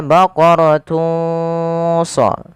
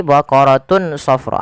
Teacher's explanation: samarkan suara tanwinnya kepada huruf shad. Maka baqaratun sa, bukan lagi baqaratun safra.